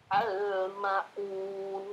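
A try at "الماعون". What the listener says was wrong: Ma-nya ada alifnya. Iya, tapi nggak kepanjangan juga. Al-ma'un gitu saja.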